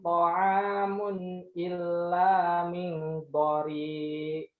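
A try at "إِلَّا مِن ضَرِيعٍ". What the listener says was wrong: Enggak maju bibirnya. bibir. Iya, do-nya juga maju. Jangan do. Jangan do. Da. Jangan do.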